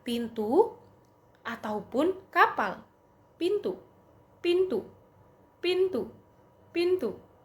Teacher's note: bunyi P termasuk dalam kategori tak bersuara karena tidak ada getaran pita suara saat bunyi ini dihasilkan